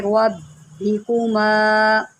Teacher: را کے اوپر زبر ہے، اس کو موٹا کریں